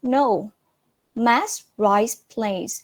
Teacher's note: So the stress was put on mass.